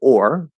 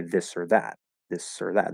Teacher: um if they're unstressed they are usually pronounced the full pronunciation the full enunciated pronunciation is or but if it's unstressed it's usually reduced to ER